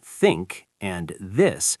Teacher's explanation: they require you to put your tongue between your teeth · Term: th sounds